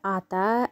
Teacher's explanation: Ата дегенде а бізде жуан дауысты дыбыс екен